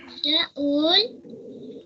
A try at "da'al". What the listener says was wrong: No, da'al. Kela gete pharta shada. The kan the ul sound hai, the what ni the al sound. So da'al.